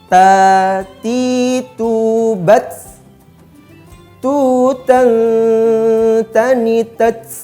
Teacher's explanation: Huruf ta, huruf to, huruf dal dan ta keluar dari bagian ujung lidah yang bersentuhan dengan gigi seri yang atas. Jadi ketiga huruf ini makhrajnya sama, ya, sama-sama di ujung lidah dengan gigi seri yang atas.